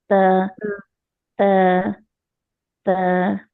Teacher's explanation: تو یہ باریک حرف ہے، زبان کی جڑ تو نہیں اٹھے. تو تا، تا نرمی سے، تا صرف ٹچ کریں گے، تا تا تا.